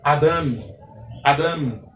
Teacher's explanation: O segundo vocábulo, observe que eu não coloquei a setinha, subentende que a sílaba tônica é a última sílaba desta palavra